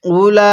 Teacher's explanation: উলাইকা, এই লামের মধ্যে আমরা 4 আলিফ টান দিব। এখানে হামজা পেশ উ, লাম খারা জবর লা, এই হামজাকে এই ওয়াওয়ের সাথে লাগাবো না।